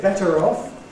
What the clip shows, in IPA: ˈbetər ˈɒf